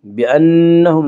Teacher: نون مشدد غنہ ہوگا، غنہ کی مقدار 1 الف ہے